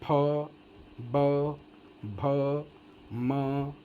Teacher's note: दोनों ओठ जोड़ करके तब आवाज़ ये बाहर आती है, इसलिए ओष्ठौ कहते हैं द्विवचन में।